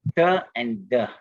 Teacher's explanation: the dental T and D are pronounced as with the tip of the tongue